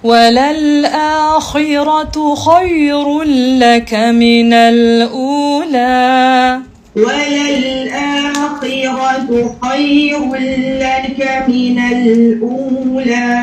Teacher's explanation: harfu kha apabila dalam keadaan kasrah dia tetap tebal ya, kecuali kita merendahkan kita punya rahang kerana kha itu bertanda kasrah kan. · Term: ketebalan kha